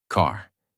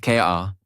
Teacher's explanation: It is fully pronounced. Your tongue moves slightly back. Your mouth stays relaxed and the sound comes from inside not from the lips. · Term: American R sound